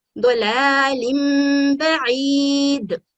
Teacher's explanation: اسی طرح آپ دیکھ رہے ہیں کہ لام کے نیچے کسرہ لائن ہے، تنوین ہے، اور تنوین کے بعد با آ گئی ہے تو ہم اس تنوین کو، اس نون کو میم ساکن میں بدل دیں گے